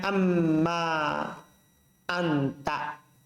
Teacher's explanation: Ke mim. Karena nun sukun ketemu mim, maka dia di idgham.